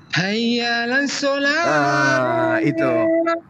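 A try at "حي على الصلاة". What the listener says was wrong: Jadi di sana bukan hayyala, tapi hayya 'ala. Hayya 'ala. Hayya 'alas shalah. Jadi hayya 'ala, bukan hayyala. Hayyala, hayya 'alas shalah, hayya 'alal falah. Jadi bukan hayyalal. Bukan hayyalal.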